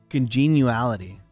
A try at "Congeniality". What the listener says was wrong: You're saying uality. Like genie.